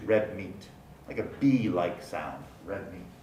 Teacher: It undergoes place assimilation to produce red meat, like a B-like sound